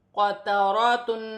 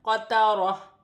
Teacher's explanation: وقف کی صورت میں دو پیش کی تنوین گر جائے گی اور تا ہا میں بدل جائے گی